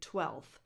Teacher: And if you look it up, there's only one correct pronunciation if you look it up on dictionaries or online, 12th. But a lot of native speakers drop the F before the TH and just say 12th, just like they do in 5th. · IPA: twɛlθ, [twɛlθ]